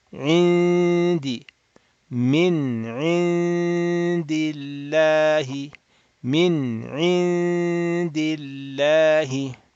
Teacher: While sitting or near the dal makhraj, we do the nasal sound of two harakat. Open up the nasal cavity while we are near the dal. Indi, indi, two harakat, two beats.